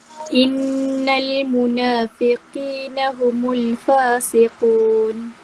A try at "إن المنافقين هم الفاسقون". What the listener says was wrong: Ya, nun sabdu, mim sabdu ni sampai 3 harakat dengung dia. Wajib guna, paling kuat. Innal, tak mau sekadar innal, tak mau. Panjang lagi. Innal munafiqin.